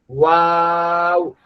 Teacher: ওয়াও উচ্চারণ করার সময় আপনার ঠোটটা গোল থাকতে হবে।